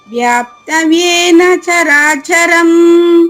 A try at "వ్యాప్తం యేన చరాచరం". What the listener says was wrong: వ్యాప్తం అక్కడ అనుస్వరం సున్నా ఉంది కదమ్మా. వ్యాప్తం యేన చరాచరం.